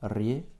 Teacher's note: accentué à la fin, ce qui va réduire notre Y en I et notre O en presque petit a.